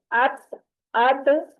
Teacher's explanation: जुबान की नोक जो है वो ऊपर वाले दांतों की जड़ पे लग रही है। यही इन हरूफ का मखरज है।